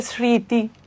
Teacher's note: শব্দের প্রথমে ব্যবহৃত হলে ম হচ্ছে অনুচ্চারিতও থাকতে পারে